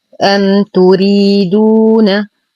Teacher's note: لدينا ميم ساكنة وبعدها حرف التاء، الحكم إظهار شفوي مع غنة ناقصة